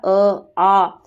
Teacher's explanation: कंठ से बोला जाता है हमारा अ आ